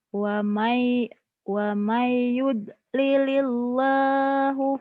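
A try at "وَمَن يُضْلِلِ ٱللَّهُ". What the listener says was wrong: Lilillah. Lilillah. Wa mayyud lilil kan tipis ini mah. Jangan ditebelin. Wa mayyud lilil. Wa mayyud lilil. Wa may.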